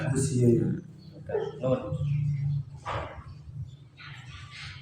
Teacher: Ujung lidah menempel pada gusi bagian atas.